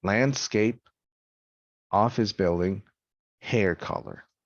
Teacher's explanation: the first word of a compound noun has primary stress and it is pronounced on a high pitch the second a word has secondary stress and a lower pitch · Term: compound stress pitch pattern